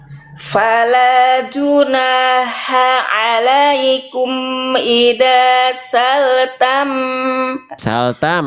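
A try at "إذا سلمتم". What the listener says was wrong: Hati-hati bunda, saltam. Mimnya kasihan nggak dibaca. Za juga jangan kembali ke ida bunda.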